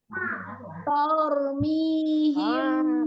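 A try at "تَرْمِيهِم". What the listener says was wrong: Taknya tidak tebal, yang ro yang tebal, tidak tor. tarmi.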